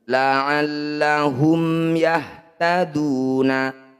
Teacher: Mim sukun bertemu bukan mim dan ba disebut bacaan izhar syafawi. Bunyi mim sukunnya baca dengan jelas, rapatkan bibir tanpa dengung.